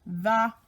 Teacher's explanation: it's the vibrating one where you stick your tongue between your teeth and make that vibrating sound